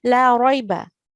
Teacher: The la carries a fatha and I only prolong it for 1 second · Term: lahan khafi